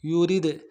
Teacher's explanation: را کو باریک کریں گے، دال کے اوپر قلقلہ کریں گے